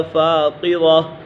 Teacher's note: قاف حرف مستعلی میں سے تو اسی وجہ سے اسے پر پڑھیں گے